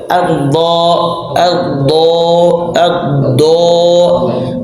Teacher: huruf Dod tempat keluarnya dari sisi lidah ketika membentur gigi geraham atas jadi sisiah ini Sisi lidah kita ini Sisi lidah ketika membentuk